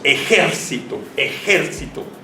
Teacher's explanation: mentales si decimos ejército entonces se va a acentuar aquí porque el sonido fonético está el ante penúltima sílaba y se convierte si se acuerdan en una palabra esdrújula